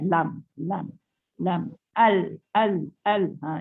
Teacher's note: huruf lam pula menekan tepi hujung lidah ke gusi atas sebelah kiri atau kanan.